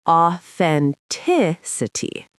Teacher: The th is right there in the middle, and the stress falls on the third syllable, authenticity